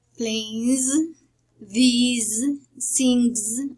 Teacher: And in the voiced, we have the z, that is called the voiced alveolar fricative